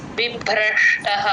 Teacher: వి కి బ ని జాయిన్ చేసి చెప్పాలి భ కి మహాప్రాణము రకారము రెండు ఉన్నాయి